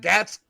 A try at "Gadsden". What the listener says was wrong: Gadsden. Aronde Gadsden. Say it with a D. Gadsden.